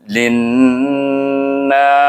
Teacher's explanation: Bila nun bertasydid kita baca dengan wajib gunnah, iaitu dengan dengung.